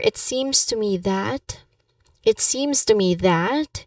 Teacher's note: Pronunciation wise, we have a light tone and then you stress on sim. So you use a light tone and then you stress on the word seems. Uh you convey with by by doing that you can convey a sense of tentativeness.